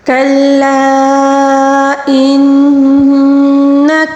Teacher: کلا یہاں پر مد منفصل ہے، اس کو 3 الف کے برابر کھینچ کر پڑھیں گے